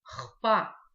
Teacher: Обратите внимание здесь просто на то, как читается буква «х». Она читается звонко.